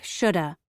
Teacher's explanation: in casual speech, the v sound is often dropped from have. For example, should have sounds like shoulda.